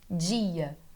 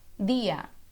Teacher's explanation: como eu sou carioca eu faço um chiadinho eu falo dia mas em espanhol nós vamos imitar os nordestinos falando dia